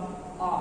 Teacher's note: देखिएगा जैसे बड़ा आ, बोलिएगा बड़ा आ, ऐसा लग रहा है कि जीभ के पिछले भाग से आ रहा है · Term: पश्च स्वर